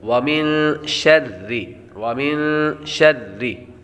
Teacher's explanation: نون ساکن کے بعد شین حروف اخفاء میں سے آ رہی ہے تو غنہ کریں گے، اور را کے نیچے زیر تو را کو باریک پڑھتے ہیں.